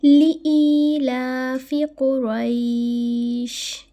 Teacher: لِإِيلَافِ قُرَيْش، یہاں پہ دیکھیں میں نے لی کو نہیں کھینچا، میں نے ای کو کھینچا